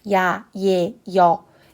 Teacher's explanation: 입술과 혀가 고정되어 있지 않고 적어도 두 번 이상 움직이게 되어 있는 모음입니다. 그래서 이런 친구들을 이중모음으로 발음을 한다.